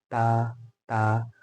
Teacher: और दोनों में वाज़ेह फ़र्क यही है कि जब हम ता पढ़ रहे हैं, ता, ता, तो ज़बान का सामने का हिस्सा ऊपर टच हो रहा है